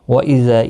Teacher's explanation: الف مدہ ہے ایک الف کی مقدار کے برابر کھینچ کر پڑھیں گے